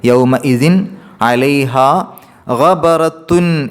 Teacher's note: അതുകൊണ്ട് തന്നെ ആ തൻവീനിൻ്റെ നൂനിൻ്റെ ശബ്ദത്തെ വെളിവാക്കണം, ഇൽഹാർ ചെയ്യണം. അപ്പോൾ യൗമ ഇതിൻ, ഇതിൻ അവിടെ എൻ എന്നുള്ള ഉച്ചാരണം പുറത്തേക്ക് കേൾക്കണം.